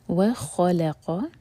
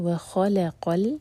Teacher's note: خا ہیوی، لام لائٹ، قاف ہیوی